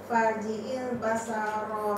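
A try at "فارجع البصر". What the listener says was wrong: Sad. Baso. So. So ni huruf-huruf tebal tu. Banyaknya masalah huruf tebal tu. Ha, tebal.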